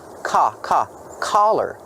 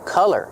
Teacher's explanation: use the sound ah, the open sound ah, like hot and stop. Ka, collar. Don't be confused with color. Color has the short sound like cup and up.